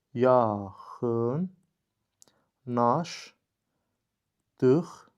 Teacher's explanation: L samiti N samiti ilə əvəz edildi. Daha sonra q samiti də X samiti ilə əvəz edildi.